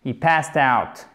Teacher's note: Puisque ici le radical se finit par un S. Donc du coup le ED se prononce comme un te.